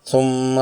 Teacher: میم مشدد ہے، اس لیے غنہ مشددہ یعنی 2 حرکات والا ہوگا۔ میم مشدد کی آواز کو ناک کے بانسے سے 2 حرکات کی مقدار میں ادا کریں گے